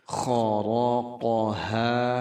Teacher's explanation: kho-nya harus ngorok, kemudian ra tebal, kemudian qaf juga dalam pangkal lidah, lalu ha besar 2 harakat.